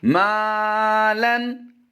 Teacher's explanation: मीम अलिफ ज़बर मा, मीम बारीक है, मुस्तफ़िला से है तो इसको बारीक पढ़ेंगे और इसके साथ इसकी निस्बत से अलिफ भी बारीक पढ़ा जाएगा और यहाँ पर भी अलिफ मद्दा करते हुए हम लंबा करेंगे।